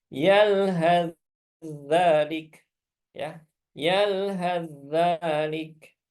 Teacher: Kemudian sa ketemu dengan za. Nah, ini sama-sama makhraj ujung lidah dengan ujung gigi seri atas